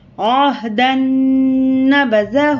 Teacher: یہ ادغام نون کا قاعدہ ہے. دال کو نون سے ملا کر غنے سے پڑھیں گے